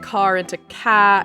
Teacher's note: If there is an R at the end, they remove it, making car into ca and normal into normal, etc.